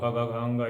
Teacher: कवर्ग और का विसर्ग का उच्चारण जो होता है कंठ से होता है, वो कंठ से करना चाहिए।